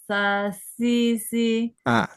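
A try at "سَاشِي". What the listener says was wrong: Shi lebih kuat. Shi.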